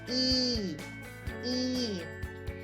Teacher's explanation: the E sound is a front vowel because you produce it at the front. The tongue moves to the front of your mouth.